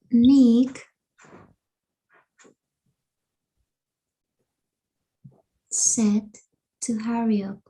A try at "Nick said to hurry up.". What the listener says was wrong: Aquí como que sí tienes que hacer esa pausa, ¿verdad?